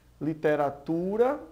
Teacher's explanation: literatura, nós vemos aí que o tu é a sílaba mais forte, é uma paroxítona